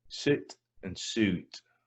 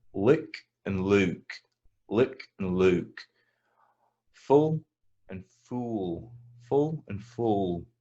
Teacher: if you're speaking scottish standard english we we don't distinguish between these words